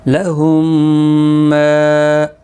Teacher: اسی طرح سے یہاں پر بھی لام زبر لا، ہا میم پیش ہم، گنہ کے ساتھ، میم الف زبر ما، لہم ما، دیکھیں یہ میم ساکن نہیں پڑھا جائے گا، یہ مدغم ہوگا اس میم کے اندر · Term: ادغام شفوی